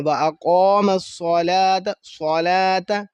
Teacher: قوف کو پر، صاد کو پر موٹا کر کے پڑھنا ہے